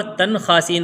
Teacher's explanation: یہاں پر آواز کو ناک میں لے جا کے نہیں پڑھیں گے، یعنی اخفا نہیں کریں گے، اظہار کریں گے